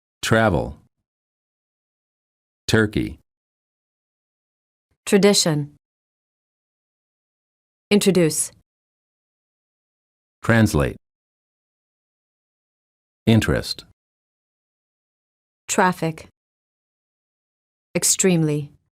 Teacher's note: T plus R sounds like an almost ch sound. When the T is followed by an R sound, the T changes and becomes an almost ch sound.